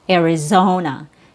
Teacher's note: It's more of a regional accent, but the standard, most people neutral pronunciation will be with a short E sound plus R, Arizona, Arizona. AR in Arizona is not stressed. So you drop the jaw, but the mouth doesn't open very wide. Arizona. Zo is the stressed syllable.